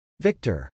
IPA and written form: vˈɪktɚ (victor)